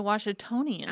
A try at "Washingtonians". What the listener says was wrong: But it's wash, not wash, like a lot of people from Midwest would add just a little extra R in there. There's no R in Washington.